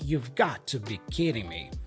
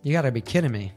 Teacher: So you would drop the auxiliary verb, like we saw earlier. You reduce you to ya, and then got to be.